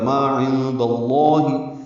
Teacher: عند اللہ میں عین وسط حلق سے ادا ہوگا ، نون ساکن کے بعد دال آنے کی وجہ سے اخفا